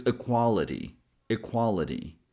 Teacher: Then in this last syllable here t doesn't sound like a regular t. It's actually a flap t sound. The same t sound we hear in water and butter.